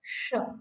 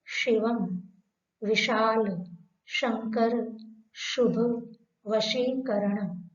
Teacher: तालु भाग से इसका उच्चारण किया जाता है, इसलिए इसको तालव्य शकार कहते हैं